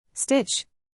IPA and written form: stɪtʃ (Stitch)